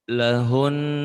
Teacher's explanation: Cara mewakofkannya adalah suaranya hun ditekan dan ditahan 2 harokat. Lahun bersisa.